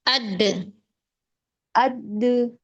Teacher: mempunyai sifat qalqalah. ee ada getaran atau pantulan suara pada huruf saat di sukun